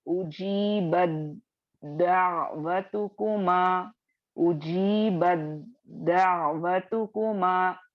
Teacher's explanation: ता की आवाज नहीं आएगी, ता की आवाज दाल की आवाज में मर्ज हो जाएगी और सिर्फ दाल की आवाज सुनाई देगी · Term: इदगाम मुतजानिसैन